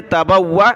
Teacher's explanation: واو کو سخت کیا تشدید کی وجہ سے